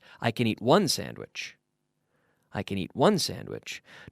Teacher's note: notice how the can is very soft